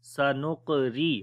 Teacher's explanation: So this qaf we read in heavy sound, and also we make qalqala, which is the weak qalqala. Sanuqri. Ra we read in light sound because there is kasra under the ra.